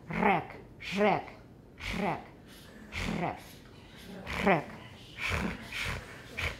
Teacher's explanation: So it's a regular alveolar trill, but it's fricative. So we've got more noise in there. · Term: alveolar fricative trill